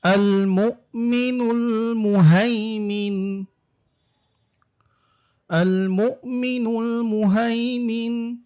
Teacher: আল মু ধাক্কা হবে, এখানে কিন্তু মিম হামজা পেশ মু হবে